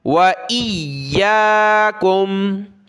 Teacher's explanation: یا کو سخت کریں گے تشدید کی وجہ سے